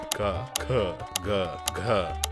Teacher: ಇವು ನೇರ ನೇರವಾಗಿ ಗಂಟಲಿನಲ್ಲಿ ಹುಟ್ಟುತ್ತವೆ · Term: ಕಂಠ್ಯ ವೇಲಾರ್